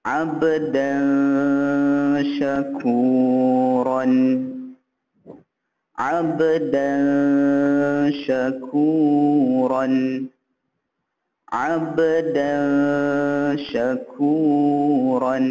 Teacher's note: tanwin berbaris di atas bertemu dengan huruf shin. Okey, bacaan dia sama juga, kena baca dengung 2 harakat.